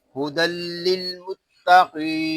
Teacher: یہاں دال کے اوپر دو زبر کی تنوین ہے، اور تنوین کو لام کے ساتھ ملا کر پڑھیں گے۔ یہاں پر ادغام یرمالون ہو رہا ہے بغیر غننے کے۔